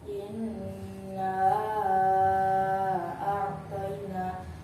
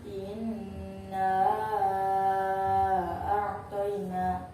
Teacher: bertemu dengan hamzah di lain kalimat, maka cara bacanya panjang. Panjangnya 3 alif atau 6 harakat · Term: mad jaiz munfasil